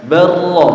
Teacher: Nah, di sini bal sama rafa'ahu harus dibaca barra. Ya, jadi lamnya hilang. Jadi lamnya masuk ke ro.